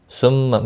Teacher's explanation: ثم میم مشدد پر غنہ ہوگا